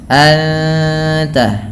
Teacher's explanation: suara nunnya disamarkan kepada huruf ta dan ditahan bunyi dengungannya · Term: ikhfa Hakiki, ikhfa hakiki